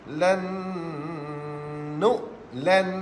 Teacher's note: nun mati bertemu dengan huruf nun idgham ma'al ghunnah. Nun yang pertama tu buang terus.